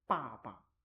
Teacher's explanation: The second 爸 is in a natural tone without the first tone